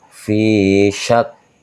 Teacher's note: syak ini termasuk huruf hamz teman-teman ya, yang harus mengeluarkan angin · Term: keluar anginnya